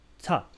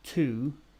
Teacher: this preposition is pronounced ta, or yeah, t, before consonants and to before vowels